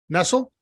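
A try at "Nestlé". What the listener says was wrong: It's not Nestle. It's Nestle, but you said Nestles because that's what we grew up. Nestles.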